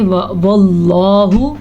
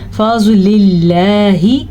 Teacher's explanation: واللہ، اللہ کا نام پر پڑھنا ہے. اللہ کے نام سے پہلے زبر آ جائے یا اللہ کے نام سے پہلے پیش آ جائے تو دونوں صورتوں میں اللہ کا نام پر پڑھتے ہیں · اللہ کے نام سے پہلے زیر ہے تو یہ اللہ کا نام باریک پڑھا جائے گا